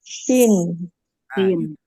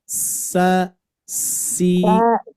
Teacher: Ujung lidah menempel ke gigi seri bawah. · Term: huruf sin